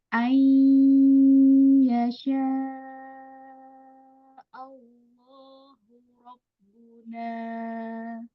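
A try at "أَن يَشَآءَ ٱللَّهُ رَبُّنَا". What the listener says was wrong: Udah kepanjangan dong.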